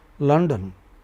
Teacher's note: London, you know is stressed on the initial syllable.